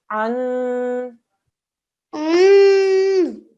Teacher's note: Noon mushaddad. 2-second nasal sound.